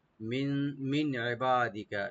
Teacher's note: নুন সাকিন এখানে জাহার করবো আমরা, গুণা হবে না।